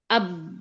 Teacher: Kalau bisa nggak mengalir suara lewat kedua bibir? Nggak bisa, karena merapat. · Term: ba sukun